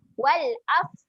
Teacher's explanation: Huruf fa ketika mati dia ada sifat keluar angin.